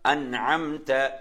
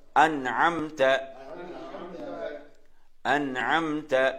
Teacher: அன் அம் நினைச்சா அப்படி ஓதாம அங்க உன்னா செய்யாம ஓது நினைச்சா அன் அம் த நூனையும் நன்றாக நாங்க நூனையும் வெளியாக்குதல் மீமையும் வெளியாக்கி ஓதுதல் ராகம் இன்றி